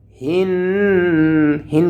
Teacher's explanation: গুণনা হবে, নুনের উপরে তাসদীদ এসেছে